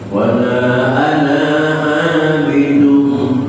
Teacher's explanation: Alif yang ada pada kalimat ana itu tidak boleh dibaca panjang. Wala ana abidun, tak boleh, karena alif di situ bukan alif mad tapi alif qasar.